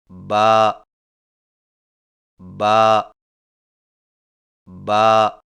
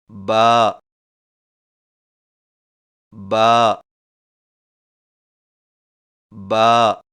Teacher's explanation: با کی ادائیگی میں ہونٹوں کے گیلے حصے کو سختی سے ملا کر باریک آواز میں پڑھیں